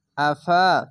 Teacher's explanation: জাবার পাশে খালি আলিফ এক আলিফ টেনে পড়বেন